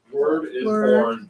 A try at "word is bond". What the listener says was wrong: Word is bond. Word is bond, though. The word, yeah, it may sound like the same born, but it's bond.